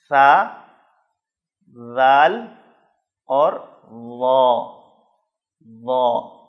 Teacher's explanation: ذال، ضا اور سا، ان تینوں کا مخرج سیم ہے، اور وہ یہ ہے کہ زبان کا اگلا حصہ یعنی زبان کی نوک، زبان کی جو ٹپ ہے، اس کو اوپر والے سامنے کے 2 دانتوں کی ٹپ سے کنارے کے ساتھ آپ نے ٹچ کرنا ہے۔ زبان کی نوک اگلے 2 اوپر والے دانتوں کی ٹپ سے کنارے سے آپ نے ٹکرانی ہے، تو یہ 3 حرف ادا ہوں گے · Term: حروف لسان